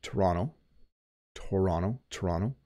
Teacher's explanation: But we actually say Toronto, Toronto, Toronto. So you notice that the second T does have a D sound, Toronto. If you're from Ontario, you might even say Toronto.